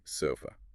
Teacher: Sofa, first syllable, S-O, is stressed. But the second syllable, fa, uses the unstressed schwa, the schwa.